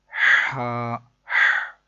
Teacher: یہ ہا حلق کے درمیان والے حصے سے ادا ہوتا ہے